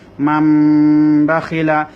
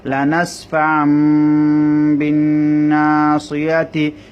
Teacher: নুনটা মিম হয়ে গেছে নুন সাকিনের পরে বা আসার কারণে